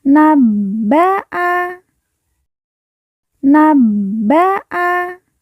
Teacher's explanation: ba yang bertasdid kita baca ditekan dan ditahan dua harakat